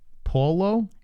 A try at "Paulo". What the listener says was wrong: A-U sounds like aw, not ah. Paulo Costa.